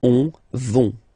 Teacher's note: final T, not pronounced, so you get this O-N nasal here · when you get this O-N combination, you get this nasal on, really in your nose